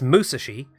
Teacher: emphasis on the first syllable as it is a Japanese word or name